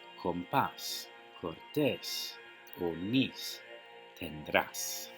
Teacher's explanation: the stress should be on the next to last syllable, but it is not